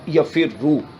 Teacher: را ساکن ہونے کی وجہ سے را کا دوسری را میں ادغام کیا تو یہ بن گیا یفررو.